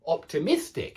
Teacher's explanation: the adjective optimistic does have the stress on the Mist optimistic it's not optimistic it's optimistic pessimistic so the adjective has